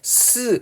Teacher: 공기가요 사이로 긁히면서 소리가 나죠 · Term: 마찰음